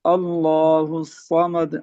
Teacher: स्वाद को मोटा पढ़ा जाएगा, अल्लाह में लफ्ज الله अल्लाह को मोटा पढ़ा الصمد जाएगा।